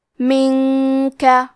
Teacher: کلمت منک میں نون ساکن ہے، پھر حرف الکاف ہے تو ہم نون ساکن کو چھپاتے ہوئے اور غنہ کے ساتھ یہ حکم کو ادا کریں گے کیونکہ یہاں حکم ہے اخفاء، منک۔